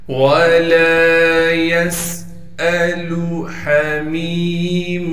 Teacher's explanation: ہا کو صاف کر کے گلے سے نکالیں گے، گلے کا وہ حصہ جو منہ کی جانب ہے